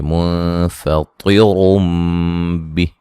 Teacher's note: نون تنوین کا اقلاب ہوگا، غنے کے ساتھ پڑھیں گے